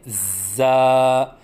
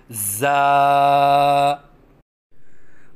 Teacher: پڑھنے کا طریقہ: زا کی ادائیگی کے وقت زبان کو دونوں دانتوں کے درمیان لائیں اور سیٹی کی آواز نکالیں، کیونکہ زا میں سیٹی کی صفت ہے، اور پھر منہ کھولیں، کیونکہ الف کی ادائیگی منہ کے کھولنے سے ہوتی ہے، اور ایک الف کے برابر لمبا کر کے پڑھیں، جیسے زا، نہ ایک الف سے کم ہو جیسے زا، اور نہ ایک الف سے زیادہ ہو جیسے زا۔